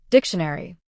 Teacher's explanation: As you can see, the stress is on dick. So, we pronounce dic louder and longer.